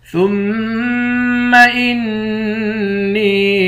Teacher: میم مشدد اور نون مشدد دونوں پر غنہ ہوگا۔ نون کو یا کے ساتھ ملا کر یا کو ایک الف کے مقدار کھینچیں گے۔